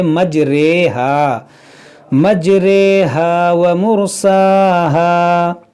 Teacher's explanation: پڑھا جاتا ہے، اس کو کہتے ہیں امالہ والی رے، تو صرف یہی ایک جگہ ہے جہاں پر آپ کو ری نہیں بلکہ رے پڑھنا ہے